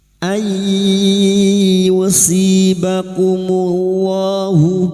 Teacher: masuk dengan mendengung masuk huruf ya dan mendengung selama tiga harakat. Ay yusibakumullahu yusi kasr di sukun dua harakat mad thabi'i. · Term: idgam biguna